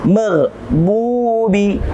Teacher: ada dhammah bertemu dengan waw sukun atau waw yang mati, berhukum tajwid mad tabi'i. Kita baca dua harakat.